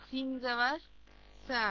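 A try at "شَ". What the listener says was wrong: শা, এটা কোন শিন? শিন জিহ্বার মধ্যস্থল উপরের তালু, শা, হ্যাঁ,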